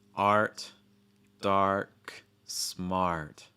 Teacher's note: Making sure that you're starting wide enough and holding that ah sound long enough before getting to that really heavy R sound. · They don't take the time to pronounce the ah sound long enough.